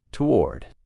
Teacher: in American English, most people pronounce this as one syllable, toward. It's almost like that first O doesn't exist, toward.